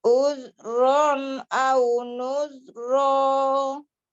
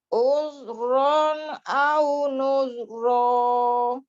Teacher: huruf zal harus lebih rohwah lagi ya.